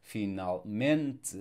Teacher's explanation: So we have the suffix ment, and the stress is the default next to last syllable.